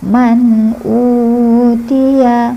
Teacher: Man jelas terus pendek. Man utiya u-nya panjang ada domah depannya wau sukun jadi panjang.